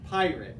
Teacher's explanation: you kind of lean into that first syllable